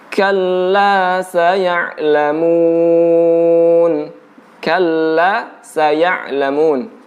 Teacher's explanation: Huruf kaf itu mengandung unsur udara yang keluar, ya. Ada angin yang terhembus ketika mengucapkan huruf kaf. Jadi jangan kalla, tapi kalla, ka.